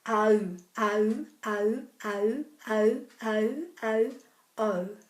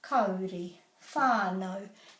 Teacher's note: the reason that it's pronounced O is because it's actually au sped up. So we've got our a and our u, au, au, au, au, au, au, au, o.